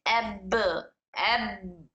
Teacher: तबाऊ मतलब यह हुआ कि जब इसको मिलाने के बाद जब हंठ मिले फिर उसके बाद एक दूसरे से दूर हुए तब इनमें जो आवाज पैदा होती है वो आवाज कलकला कहलाती है